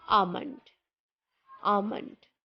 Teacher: the trick to pronounce it is just remove the L sound in the word and we say almond, not almond.